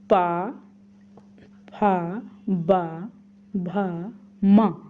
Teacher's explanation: इनको बोलने में हम लोगों को ओंठ का स्पर्श हुआ है।